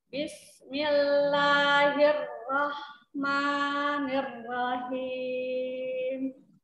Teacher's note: Bismillahi dilebarkan di makhraj lam, dilebarkan lidahnya.